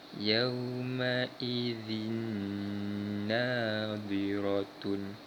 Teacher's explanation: memasukkan bunyi tanwin pada huruf seterusnya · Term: Idgham Bighunnah